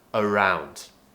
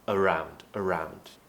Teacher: remember to pronounce around with the schwa sound on the A